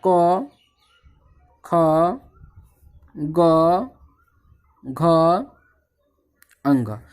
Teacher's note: ओ आ क वर्ग यानी कि क ख ग घ अंग ह और विसर्ग का उच्चारण स्थान कंठ है।